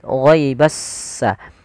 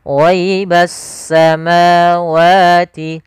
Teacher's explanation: sehingga langsung diidghamkan ke huruf setelahnya yaitu huruf sin, sehingga langsung di huruf sinnya bertasydid, ghaibassa. Jadi S-nya seakan-akan ada dua. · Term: alif lam syamsiyah